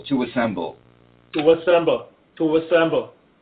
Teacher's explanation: that little neutral vowel at the beginning of the word